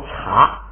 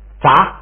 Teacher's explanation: 茶是那个送气的，现在变成札不送气了